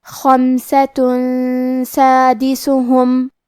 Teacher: سین حروف الاخفاء میں سے ہے اور اخفاء کا معنی ہے چھپا دینا، تو ہم یہ تنوین کو چھپاتے ہوئے اور غنہ کے ساتھ یہ حکم کو ادا کریں گے